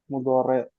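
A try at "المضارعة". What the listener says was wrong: Mudhara'ati. Ya kalau orang Jawa mudere sih ngomongnya. Mudhare. Mudhara'ah. Mudhara'ah.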